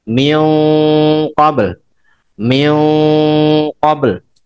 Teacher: tebalnya karena mengikuti sifatnya huruf qaf yang isti'la dan isti'la tanpa itbaq, isti'la infitah.